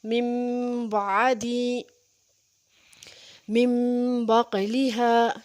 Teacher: من بعدی، یہ دیکھیں نون ساکن کے بعد با رہا ہے، نون کو ہم نے میم سے بدل دیا اور میم سے بدلنے کے بعد ہم اس کے اوپر غنہ کریں گے